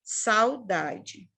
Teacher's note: O U, ele vai caindo, ó. Ele vai morrendo, o som dele vai descendo. Por isso que ele é uma semivogal.